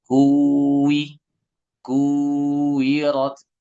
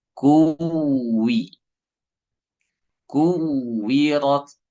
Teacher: di intonasi suara agak naik ya untuk menjelaskan double-nya wau tasdid